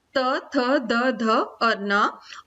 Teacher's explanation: दांत से जो बोले जाते हैं वर्ण, दांत के प्रयोग से, दांत के स्पर्श से